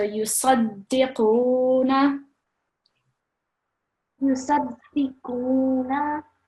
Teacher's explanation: there's to be a bit more emphasis on the dal with the shadda